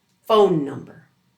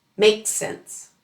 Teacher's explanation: we blend them and say phone number as if it were one single word with no stopping in between